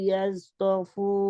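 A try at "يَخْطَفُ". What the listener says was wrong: ইয়াজ না, এটা জিম না, এটা খ।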